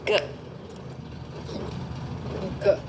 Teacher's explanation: You'll notice the back of your tongue is going and snapping against the back of your palate